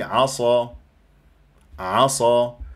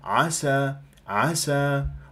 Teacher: اذا جاورت السين العين لابد من بيان همسها ورخو خوفا من ان تتحول الى الصاد مثل كلمه عسى فراح